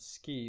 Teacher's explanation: you would say the word ski the K is not aspirated